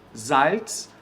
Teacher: Tem que falar como se tivesse um T e um S aí.